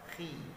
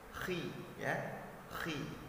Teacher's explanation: Nah, di sini yang harus diperhatikan adalah pada saat kha-nya berbaris fathah dibaca menebal ataupun tebal, kha, ya, kha tebal. Pada saat dia berbaris di bawah dibaca tipis atau menipis suaranya. Contoh, khi, ya, mulutnya agak ditarik ke bawah dan agak ke belakang sedikit.